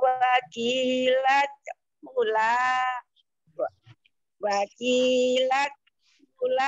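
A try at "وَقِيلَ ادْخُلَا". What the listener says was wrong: Wakilat kulan dalnya kol-kolan. Wakilat kulan.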